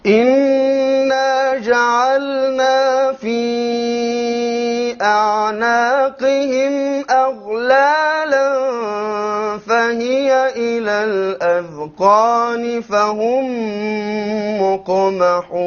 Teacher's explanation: The lam must be clearly pronounced because lam and noon have similar makharij, right? So many times it's eaten up.